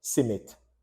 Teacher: we break down that S and nasal cluster by inserting a vowel. Most times, depends on the word, you will know what to insert. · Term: S nasal cluster